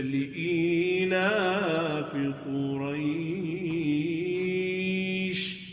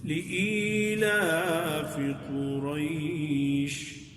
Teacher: چھوٹی مد کرنا، مد قصر اسے کہتے ہیں، وہ افضل ہے، یعنی تینوں مدوں میں سے، کہ بہت زیادہ اس کو لمبا نہ کیا جائے